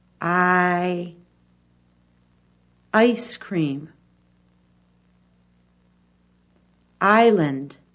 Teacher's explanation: the long I sound is made by opening the mouth wide the teeth are apart with some of the top and bottom front teeth shown the sides of the tongue touched the top back teeth